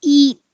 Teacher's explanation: difference from being tense and high to a little more relaxed the e in eat is tense and your tongue is bunched up towards the front of your mouth